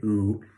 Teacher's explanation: we also call that back high which is ooh in American English that's always round right ooh and then we've got just a little bit down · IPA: uː